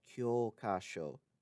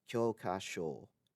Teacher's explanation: kyokasho, textbook, has a long O sound in the first syllable, whereas kyokasho, license, has a long O sound in the final syllable